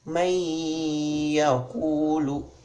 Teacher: kita harus memasukkan nun ke dalam iya disertai dengan dengung, ditahan 2 harokat. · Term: idgham bigunnah